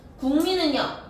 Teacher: 기억이 미음을 만나서 이응으로 바뀌는 현상